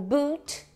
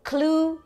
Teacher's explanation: o U, que é bem parecido com o nosso U do português de uva, só que ele é um pouquinho mais longo também. De novo eu posso colocar os dois pontinhos para especificar que ele é uma vogal longa numa palavra como boot, né?